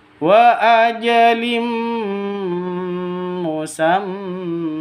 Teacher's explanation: bilhaqqi wa ajalim musamna di sini ada tanwin bertemu dengan mim cara bacanya masuk ke mim disertai dengung dua ketukan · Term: idgham bighhunah, idgham bi gunnah